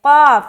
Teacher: تو کل نہیں بولنا، یہاں پر قاف ہے، قاف. یہ قاف موٹا ادا ہوتا ہے، یہ حروف مستعلیہ میں سے ہے. اگر آپ اس کو موٹا نہیں ادا کر کے باریک ادا کریں گے تو اس کا معنی چینج ہو جائے گا.